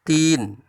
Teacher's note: Di situ terdapat mad tabi'i, di mana kasroh bertemu dengan ya mati atau ya sukun. Ti dipanjangkan 2 harakat.